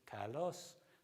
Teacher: the word for beautiful, for example, kalos, the voice rose on the second element. Now it's become a stress accent, so modern Greek would say kalos, and they'll stress it. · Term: pitch accents